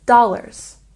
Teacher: a stress on the first syllable in dollars